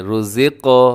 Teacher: اس کو اپنے ہلانا ہے، رزق ایسے ڈبل کر دیں اس کی آواز کو، اسے کہا جاتا ہے قلقلہ